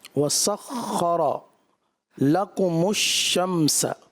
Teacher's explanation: شین کی ادائیگی بھی جو ہے نا وہ تفشی کے ساتھ ادا ہوتی ہے، وہ مکمل محسوس نہیں ہوئی، اور ایسا لگ رہا ہے جیسے کوئی دوسرا حرف ادا ہو گیا۔